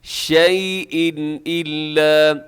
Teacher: شیء پہ تنوین کے بعد حمزہ، یہاں اظہار کیجیے گا